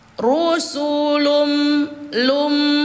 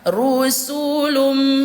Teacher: Tanwin ini kita leburkan ke huruf mim. Rusulum lum, begitu bacanya, bukan lun bacanya teman-teman ya, karena sudah dilebur ke huruf mim, jadi bacanya rusulum gitu ya. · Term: idgham bi gunnah